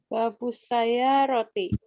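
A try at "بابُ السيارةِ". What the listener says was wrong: Yes, gitu. Terima kasih.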